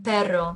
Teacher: there's a Trill or rolled R in pero